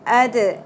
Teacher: दाल साकिन पे हम कलकला करेंगे · دال ساکن پہ ہم قلقلہ کریں گے